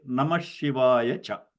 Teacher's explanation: So when you chant that, with the Samhita Patha, you will say Namah Shivaya Cha. Okay, so the Visarga will become like another Shakara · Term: Visarga sandhi